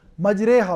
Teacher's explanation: تو امالہ صغریٰ میں کیا ہوتا ہے کہ یہ الف سے ہٹی ہوئی ہوتی ہے لیکن الف کے قریب ہوتی ہے، اور جہاں تک امالہ کبریٰ کا تعلق ہے الف اور یا کے بالکل درمیان میں آواز کو نکالا جاتا ہے